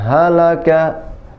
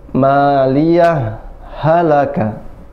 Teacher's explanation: kalau misalnya mau disaktah, maka berhenti dulu sejenak baru lanjut.